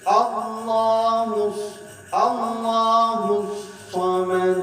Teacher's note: Hus digentak itu sebab ada syiddah di situ.